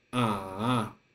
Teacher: first go down and then climb up in the halfway just like a roller coaster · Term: third tone